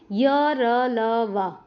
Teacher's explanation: अंतस्थ हैं जिनमें जीवा मुख के किसी भी भाग को पूरी तरह से नहीं छूती और इनके उच्चारण में श्वास का अवरोध बहुत ही कम होता है।